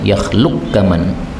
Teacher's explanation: qaf ketemu kaf bisa idgham ya